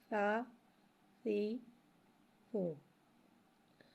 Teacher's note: سا کو ایک الف یعنی 2 حرکات کے برابر کھینچ کے پڑھیں گے. سا نرمی والا حرف ہے، لہٰذا اس میں سیٹی نہیں آئے گی